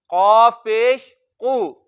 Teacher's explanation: काफ हमने देखा हुरूफ मुस्तालिया में है तो इसको मोटा पढ़ेंगे